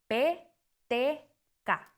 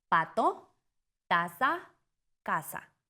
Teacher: Se cierra totalmente el paso del aire. P T K. Ejemplo, pato, tasa. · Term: oclusivos